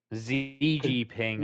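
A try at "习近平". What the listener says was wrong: the X is pronounced as a C in Chinese, so it'd be Xi Jinping. But it could be Xi Jinping as well.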